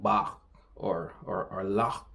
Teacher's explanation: a noise that you pronounce at the back of your throat